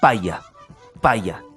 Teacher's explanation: paya paya el choque de los dos labios son Bill labiales el uso de los dos labios en el punto de articulación